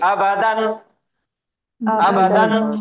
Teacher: یہ حمزہ کو جلدی پڑھیں گے، با کو جلدی پڑھیں گے، اور دال کو نون کے ساتھ پڑھیں گے